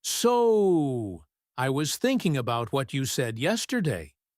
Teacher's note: They stretch the so to give themselves a second to remember what you said. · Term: stretched words